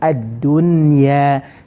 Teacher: Bila tak dengung, mesti kena cepatkan sebutan tersebut. Hujung lidah ditekan ke gusi. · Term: izhar mutlaq